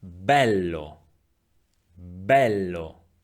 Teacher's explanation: vowel e has two different pronunciation One open and one closed we find the open e in the word bell bell